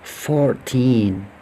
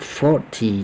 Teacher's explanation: Jadi kalau mengatakan teen itu agak naik, sedangkan kalau puluhan, T itu turun. Seperti pada contoh tadi, 14, 40, 14 naik, 40 turun. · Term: intonasi atau penekanan